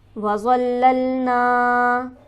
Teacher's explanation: لام پر ہم سختی کریں گے اور ذرا رک کر پڑھیں گے تشدید کی وجہ سے. نون پر ہمارے پاس حرف مدہ موجود ہے، اسے ہم کھینچیں گے ایک الف کے برابر.